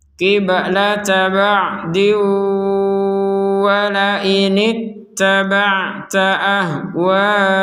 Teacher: tanwin di sini bertemu wawu, maka kita memasukkan disertai dengungan. Qiblata ba'di wa la in, diwa dengungan baru ke wa.